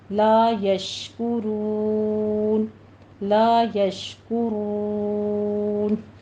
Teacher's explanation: رون میں بھی را مفخم پڑھی جائے گی، اور آگے مد عارض وقفی کر لیں گے، لا یشکرون، لا یشکرون۔